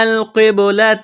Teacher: قاف کو موٹا کرنا ہے، بڑا قاف ہے ، با ساکن ہے تو با پر قلقلہ کریں گے، تا